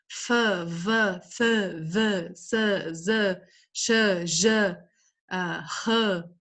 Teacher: Fricativas, as que deixam o ar passar com fricção.